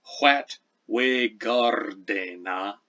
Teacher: the R is trilled